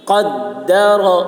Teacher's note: والذی قدر، قاف کی آواز موٹی ہوگی، قاف کو دال کے ساتھ سختی کے ساتھ یہاں پہ ملائیں گے